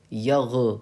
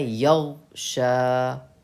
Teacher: یغ میں غین پہ قلقلہ نہیں ہو، دھیان رکھیے گا اس بات کا.